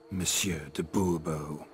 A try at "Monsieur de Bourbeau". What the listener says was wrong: The emphasis falls on the last syllable. Bourbeau?